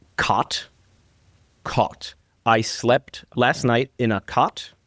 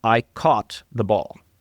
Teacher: I would argue that you do keep them separate, but yours are probably much more merged or closer together than your mother's versions of those vowels.